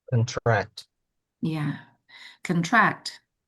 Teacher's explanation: Ketika dia kata kerja, maka stressnya occurs on the second syllable, pada track-nya.